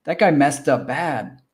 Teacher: that hard T sound followed by another consonant sound, the harder T sound drops out